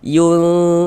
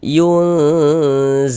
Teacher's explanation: Jadi makhrajul huruf nun dengan huruf zai ini dia di tengah-tengah, tidak jauh juga tidak dekat, maka dikatakan awsat. Cara membaca ikhfa-nya dibaca samar kemudian didengungkan. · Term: ikhfa hakiki